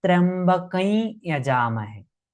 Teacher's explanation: When Tryambakam anusvara joins with ya it's chanted as Tryambakai Yaja Mahe